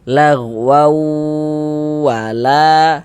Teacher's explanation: Tapi dibaca lagwau. Kemudian di bagian waunnya itu suaranya itu kita tahan, kita panjangkan sejenak. Ah, kita ghunahkan sepanjang dua harakat.